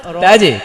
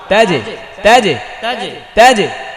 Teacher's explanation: জিমের কলকলা নিচের দিকে যাবে, জেরের মতো হবে, জে, জে হবে, জয় একার জে।